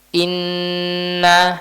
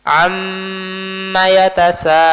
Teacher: Nah, kalau diperhatikan ketika kita mengucapkannya, maka gunanya itu sangat-sangat sempurna sehingga suaranya tidak akan keluar kalau kita tutup hidungnya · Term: nun dan mim yang bertasydid